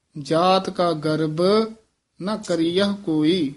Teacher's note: ਗਰਬ ਇਹ ਬਬੇ ਨਾਲ ਬੋਲਣਾ ਭਬਾ ਨਹੀਂ ਬੋਲ ਦੇਣਾ